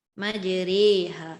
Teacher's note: Tapi imalah ini adalah cenderung kepada baris bawah, maka dibunyikan majriha. Majriha. Jadi disebabkan cenderung disebabkan cenderung kepada baris bawah, maka diletakkan diamond itu di bawah kalimah.